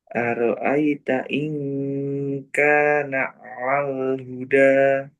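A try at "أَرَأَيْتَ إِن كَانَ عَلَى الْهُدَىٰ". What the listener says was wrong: kurang jelas alalnya ala coba A a ala ala. Nah, itu alal alal.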